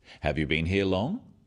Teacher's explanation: Questions that start with have you are yes-no questions, so they have a rising tone.